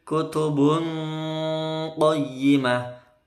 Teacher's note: tanwinnya dibaca menuju ke qaf, tidak boleh kutubung, nggak pakai eng, ya, bukan kutubung tapi kutubun qayyimah. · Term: ikhfa